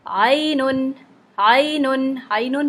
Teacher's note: عینن پڑھتے ہوئے آئی پڑھتے ہوئے ناک میں آواز نہیں جائے گی